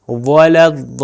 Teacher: و تھوڑا سا گول کر کے پڑھا جا رہا ہے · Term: واو